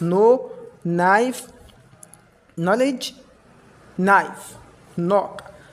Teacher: in the examples K is not pronounced We pronounce N instead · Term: silent K